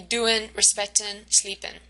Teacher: we see that most final consonants are dropped